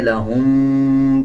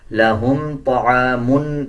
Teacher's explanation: میم کو جب پڑھیں گے غنہ نہیں کیا جائے گا، اکثر لوگ اس میں غنہ کر دیتے ہیں، لہم پڑھ دیتے ہیں، غنہ نہیں کیا جائے گا، لہم طعام پڑھا جائے گا۔